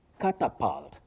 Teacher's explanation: So the U takes what we call the mid-central sound